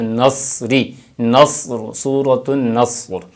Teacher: صاد کے اوپر زبر پڑھتے نہیں، جبکہ اس کو ساکن رکھنا ہے، اس کے اوپر کوئی زبر نہیں ہے، اس کے اوپر صرف جزم ہے، علامت سکون اس کے اوپر موجود ہے، تو نصری، نصر، سورۃ النصر۔